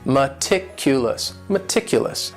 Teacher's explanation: this word has four syllables and the stress is on that second syllable